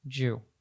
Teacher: So instead of it being did you, it becomes just Jew.